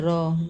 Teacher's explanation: वे वर्ण जिनका उच्चारण करते समय जीभा कंपन करे, र। हाँ, जीभा थोड़ा हिलता है, बोल के देखेंगे तो समझ में आएगा। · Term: लुंठित व्यंजन